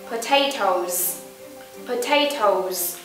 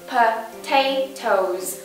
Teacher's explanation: Chúng ta nhấn vần A. Potatoes. Chúng ta bằng môi lại.